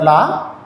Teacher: நான் மேல் பற்களின் அடியை தொடுவதால் லகரம் பிறக்கும். இதுக்கு வகர லகரம்னு சொல்கிறாங்க.